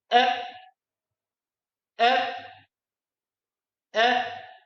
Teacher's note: The letter Hamza comes out from the part of our throat which is nearest to our chest. Hamza. The sound of Hamza with fatha is eh, eh, eh.